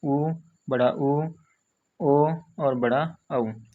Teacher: और व्रतमुखी में कौन से आते हैं भैया, तो बाकी जो बचे हैं ऊ, बड़ा ऊ, ओ, और बड़ा औ, ठीक है, ये हमारे क्या आते हैं भैया, व्रतमुखी में आते हैं, ठीक है। जिनके उच्चारण में होंठ गोल हो जाएं उनको क्या कहा जाता है, व्रतमुखी कहते हैं, और जिनके उच्चारण में होंठ गोल नहीं हो वो क्या कहलाते हैं, हमारे अव्रतमुखी कहलाते हैं।